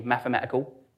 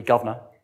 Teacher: the Ls sometimes get dropped off the end